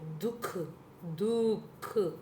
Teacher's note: आपका कंठ से निकलता है विसर्ग ह जैसे ह की आवाज आते है ना